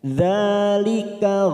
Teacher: dza fathah berdiri atau Alif kecil ini dua harakat kita panjangkan